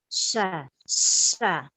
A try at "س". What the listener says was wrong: Kurang narik, Bu.